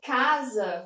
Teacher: eu tenho aqui 2 vogais que são classificadas como orais porque essa sonoridade ela sai pela boca